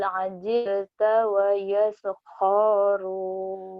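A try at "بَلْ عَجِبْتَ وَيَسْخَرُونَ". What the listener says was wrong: Ho-nya pendek. Ayo hati-hati. Yang panjangnya yang mana jadi panjangnya. Padahal yang panjang cuman ini doang nih, ujung doang. Bal ajib tawayas kharun.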